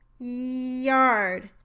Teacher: Do you hear how the consonant sound turns into the vowel E when you try to lengthen it? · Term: voiced palatal glide